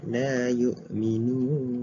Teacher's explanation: Dan dekat mad ni ia boleh dibaca dalam 2 harakat ataupun 4 harakat ataupun 6 harakat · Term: mad arid disukun